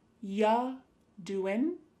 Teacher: Listen to that G at the end. Ya doing, it's gone.